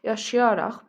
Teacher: Nə artım, nə səs düşümü olmayıb. Vurğu sözün 3-cü hecasındadır.